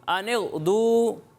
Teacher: आपने गैन में आवाज़ को हिलाना नहीं है, यानी कलकला की तरह नहीं पढ़ना।